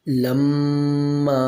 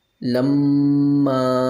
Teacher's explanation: میم کو اپنے مخرج کے ساتھ ادا کریں گے اور ناک میں اس کی جو ہے آواز لے جائیں گے ایک الف کے برابر، لما۔ میم اگر مشدد ہو تو اس میں غنہ کرنا ضروری ہے، اور غنہ کہتے ہیں ناک میں آواز لے جانا۔